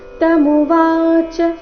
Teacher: ತಮುವಾಚ ವ ಮಾತ್ರ ದೀರ್ಘ